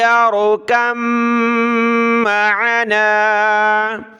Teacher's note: تو دیکھیں با اور میم دونوں کا مخرج ایک جیسا ہے، یعنی با کو ہم جب پڑھتے ہیں تو دونوں ہونٹ ہم ملاتے ہیں، اور میم کو پڑھتے ہیں تو دونوں ہونٹ ملاتے ہیں